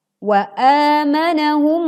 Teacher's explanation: a dibaca panjang 2 harokat. Wa amanahum, sempurnakan dengungnya.